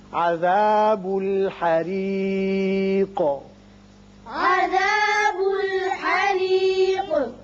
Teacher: یہ را باریک ہوگا اس لیے کہ نیچے کسرہ ہے اور قاف ساکن کر رہے ہیں لہذا اس کی صفت قلقلہ ادا کریں گے